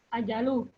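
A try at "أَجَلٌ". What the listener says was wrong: Ajalun, lun tanwin. Wa ajalun. Wa ajalun.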